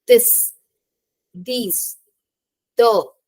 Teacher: put your tongue between your teeth and force air out through the small Gap with a voiced sound